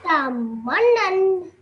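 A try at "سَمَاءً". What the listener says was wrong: So over here, just make sure that you say both of these letters separately, okay? Sama. Samanan. And like you said, did really well over here at the end. you have noon with the neen, so this is fatha 10 on top of it. So you produced a very beautiful nasal sound at the end for 2 seconds. Samanan.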